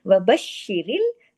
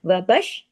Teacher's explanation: शीन पे तशदीद है, सख्ती से जोड़ना है, तमाम बारीक हुरूफ है। वबश, देखिए एक शीन पढ़ने में आएगा, बश शी, शीन 2 शीन पढ़ने में आएगा।